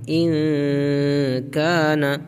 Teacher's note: کے بعد حروف اخفا کے 15 حروف میں سے کاف ہے، نون کی آواز کو ناک میں چھپائیں گے